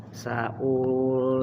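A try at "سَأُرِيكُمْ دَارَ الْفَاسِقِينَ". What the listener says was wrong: Sauri wawunya pendek.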